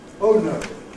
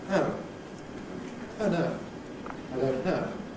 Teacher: The lips are spread [ əʊ ].